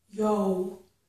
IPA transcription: joʊ